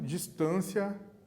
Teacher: distância, 3 sílabas, o acento está na penúltima sílaba, no T, certo?